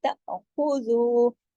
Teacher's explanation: خواہ ہمیشہ موٹا پڑھا جائے گا کیونکہ خصہ دقتن کے جو 7 موٹے حروف ہیں خواہ اس میں شامل ہے